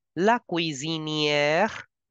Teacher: S is between two vowels, so please change the sound to Z.